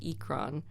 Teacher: Like for the beasts that they fly in the game, they're called ikran, but the stress syllable is on the ik, and then the r has a rolled r